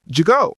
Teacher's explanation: textbook is did you go but natives say did you go notice the d from did connects to the y in you that's linking